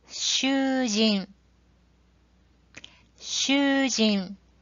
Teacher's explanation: the second u moves closer to the preceding shu, resulting in a sound that is intermediate between u and shu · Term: long vowel